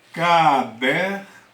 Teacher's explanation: a minha sílaba tônica é o der. Não é a última, é a penúltima. Então ela é uma paroxítona.